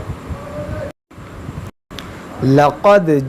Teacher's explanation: قاف موٹا ہے، موٹا کریں گے، دال ساکن ہے تو یہاں قلقلہ کریں گے